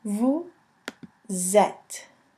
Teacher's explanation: the S liaison between the S and the E, which creates a Z sound